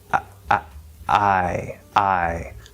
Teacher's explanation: technically English vowels actually start from a glottal stop